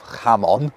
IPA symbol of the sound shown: h